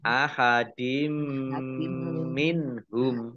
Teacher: Idgham masuk bi dengan gunnah mendengung. Yaitu mendengung mim, ditandai mimnya ada tasdidnya, ya, ditahan 2 harokat. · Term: idgham bi gunnah